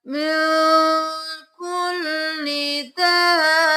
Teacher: بَيَّنَّاهُ لِلنَّاسِ مِن كُلِّ دَابَّةٍ، با پہ دے لگانی ہے کیونکہ 2 بار ادا ہوگا، ہم داب با نہیں کریں گے، با کو با کے ساتھ 2 بار پڑھیں گے۔